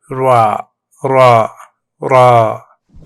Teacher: Roll that R. This is a rolled R, like in Spanish or Italian.